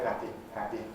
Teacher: people who share the same sort of social background, that are 30 years younger, tend to say happy, happy with a tighter E